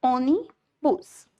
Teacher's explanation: Vocês viram que ônibus tem 2 sílabas, ônibus. No caso, a sílaba tônica aí é oni. Logo, é a penúltima sílaba.